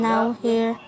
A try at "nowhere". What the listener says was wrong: He mispronounced nowhere with now here.